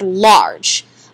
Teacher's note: it's that R controlled vowel where the V vowel takes over or the r takes over that vowel sound R I don't really hear a specific vowel sound in that